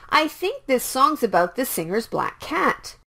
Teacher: C in cat is a k sound so you can pronounce 1 k for a little bit longer